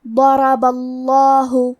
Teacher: آخری میں حرف البا پہ زبر ہے لہذا ہمیں لفظ الجلالہ مطلب کلمت اللہ کے لام کو تفخیم سے مطلب موٹی آواز میں پڑھنا ہے · کلمت ضربہ میں حرف الضاد کی ادائیگی زبان کے کروٹ اور اوپر کے داڑھوں کی جڑ سے ہے. ضاد حروف التفخیم میں سے ہے تو ہم یہ حرف کو بھاری آواز میں پڑھیں گے · کیونکہ را پہ زبر ہے تو ہمیں حرف الرا کو بھی موٹی آواز میں پڑھنا ہے